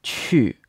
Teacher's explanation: this is in the fourth tone so your voice falls in pitch